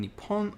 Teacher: before the consonant coming after in this case that means that the po sound in nippon will have a small pause followed by a stronger p